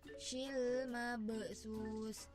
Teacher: disebut dengan qalqalah sugro karena terdapat huruf ba mati atau ba sukun di tengah-tengah kalimat. Dibacanya dipantulkan secara ringan.